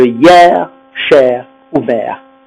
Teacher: les monosyllabes terminés en ER, on va prononcer le R et puis le E est ouvert.